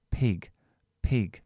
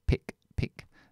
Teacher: aunque quitamos la voz mantenemos la longitud